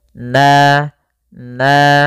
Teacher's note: fathah bertemu alif panjangnya dua harakat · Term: mad thobi'i